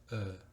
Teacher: El tipo de lengua de E más labios de O va a dar un sonido parecido, pero un poquito más abierto, que es el E.